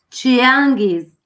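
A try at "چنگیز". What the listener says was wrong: Esatto, ma sì, vabbè, non Chia, Changis.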